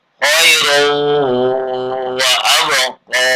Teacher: Karena huruf idgham bi gunnah maka tanwinnya luluh ke wawu.